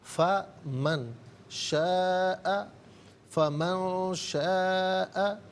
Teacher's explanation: اخفاء کہتے ہیں ناک میں آواز لے جا کر گنگنانا